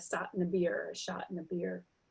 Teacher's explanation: the S is substituted for SH